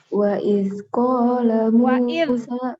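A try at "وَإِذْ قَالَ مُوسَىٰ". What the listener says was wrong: Tebal ko. Wa iz qala. Coba.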